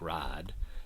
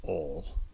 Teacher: monophthongization of the diphthongs I and ow. So a word like ride might sound like rad, and a word like oil might sound like ol, right?